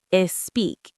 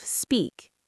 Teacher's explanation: adding a vowel before the S